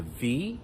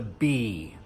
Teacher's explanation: We hear the V. V. Labiodental, right? Labiodental. And the B--bilabial, bilabial.